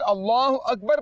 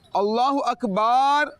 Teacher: अगर अल्लाहु अकबर पढ़ा तो ये ठीक होगा, अल्लाहु अकबार पढ़ा तो ये गलत हो जाएगा, क्योंकि आपने बा को खींचा है